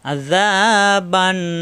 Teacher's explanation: কণ্ঠনালীতে চাপ দিয়ে আইন, জিব্বার আগা দাঁতের গায়ে নরম করে একালিফ টান